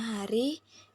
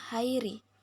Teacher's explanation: kata hari kata aslinya hari diftongisasinya Hairi beberapa penutur Mengucapkan hari dengan mengubah vokal tunggal a menjadi diftong Ai